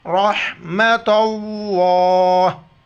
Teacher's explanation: آخر میں ہا کا جو ساؤنڈ آئے گا لفظ اللہ سے پہلے تا پر زبر لفظ اللہ موٹا کر کے پڑھیں گے را پر بھی زبر را کو موٹا کر کے پڑھیں گے